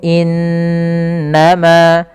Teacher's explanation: ada bacaan gunah berupa Nun yang berharakat tasdid